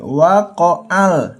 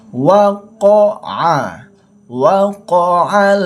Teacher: Tidak boleh. Karena ini ain sifatnya ditekankan atau ditenggorokkan keluarnya